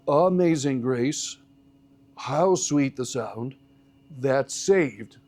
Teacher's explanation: Amazing Grace starts with a different pattern where it's weak, strong, weak, strong, weak, strong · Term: metrical pattern